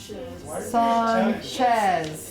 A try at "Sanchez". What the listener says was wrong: because it's a ch sound. can't just put SH.